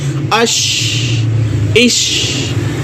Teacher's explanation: شین کی آواز پورے منہ کے خلا میں جو ہے وہ خالی حصے میں پھیل رہی ہے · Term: تفشی